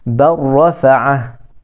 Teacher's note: Idgham yang tidak ada gunnah. Yang tidak ada dengung, dia terus masuk. Dia sama macam idgham bila gunnah, sebiji, sama. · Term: idgham kamil